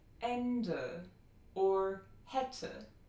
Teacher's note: e is a short, low mid, front, unrounded, lax vowel. The e in North American English is a little higher and more central.